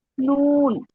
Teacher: জিহ্বার আগা হচ্ছে উপরের তালুর সাথে লাগিয়ে উচ্চারণ করতে হবে